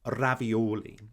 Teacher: trilled by the very tip of your tongue it's quite similar to the r sound in italian so if you take the italian word ravioli ravioli you can